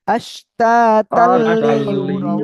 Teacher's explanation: তানবিনের পরে ঈদগামে বেলা গুন্নার অক্ষর লাম আসছে, আমরা গুন্না ছাড়া মিলিয়ে পড়বো।